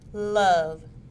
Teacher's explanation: O is made using the tongue and alveolar ridge. The tongue is placed directly behind the top row of the teeth. It is a liquid sound and is voiced. The vocal cords vibrate.